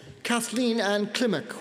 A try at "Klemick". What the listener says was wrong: So, pronounce the K. Klemick.